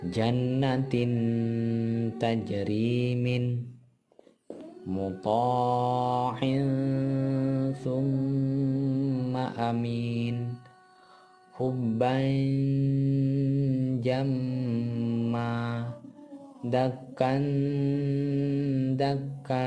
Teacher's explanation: suara nun sukun atau tanwin masih tetap terdengar tetapi samar antara idhar dan idgham dan terus bersambung dengan makhraj huruf berikutnya sehingga kedengarannya seperti yang 4 ini. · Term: ikhfa